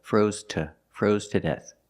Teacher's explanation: the pronunciation of to is T